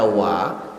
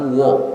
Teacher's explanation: waw di patah itu dibaca wa, bukan wo